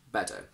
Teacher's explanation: But sometimes in a couple of words we get a little bit lazy and we Americanise this T into a D.